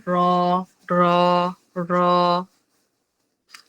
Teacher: তার বরাবর উপরের তালুর সঙ্গে লাগাইয়া উচ্চারিত হবে র র র যেবার আগার উল্টাপিঠ তার বরাবর উপরের তালুর সঙ্গে লাগাইয়া উচ্চারিত হবে র